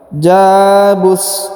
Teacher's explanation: Huruf ja dipanjangkan 2 harokat karena di depannya terdapat alif.